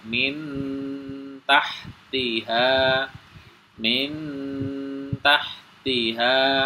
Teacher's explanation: jadi tahan satu ayunan atau dua harakat